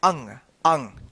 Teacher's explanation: अनुस्वार इसका जो उच्चारण होता है ना नाक की मदद से होता है अंग अंग ठीक नाक की मदद से होता है ठीक है